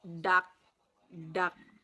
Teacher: The sound D is pronounced by placing the tongue near the alveolar spines.